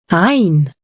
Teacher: The sound comes from a very deep part in the throat.